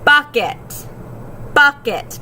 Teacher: The first syllable is accented or stressed.